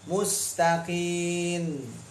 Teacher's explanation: banyak yang enggak sadar lidah nempel duluan ada bunyi Nun